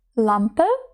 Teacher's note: Літера L вимовляється трохи м'якше, ніж українська л